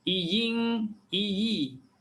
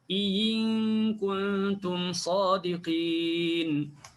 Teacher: Tukarkan hamzah yang kedua itu menjadi huruf ya yang berbaris di bawah. Bunyi betul-betul ya baris di bawah.